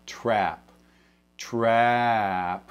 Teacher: So what they mean is a word like, not as much on this word, but a word like trap. Trap starts to approach the E sound. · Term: flat a sound, flat A